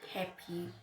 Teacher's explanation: The first syllable is stronger. So it receives the stress.